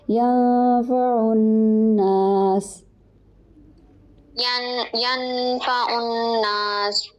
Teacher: ینفع نون ساکن ہے، آگے فا ہے تو یہاں پر اخفا ہوگا، ناک میں نون کی آواز کو چھپائیں گے